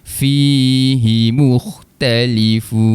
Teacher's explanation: Mad asli dibaca dengan kadar dua harakat.